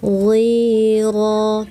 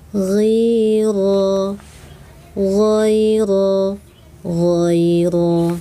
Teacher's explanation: Ghi, ujung tenggorokan. ghira, tebal takhim ra, angkat lidah seluruh ra